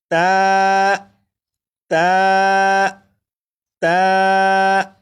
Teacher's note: ता को भी 1 अलिफ के बराबर खींच कर पढ़ेंगे। जैसे ता ता ता, 4 मरतबा आप पढ़ेगा।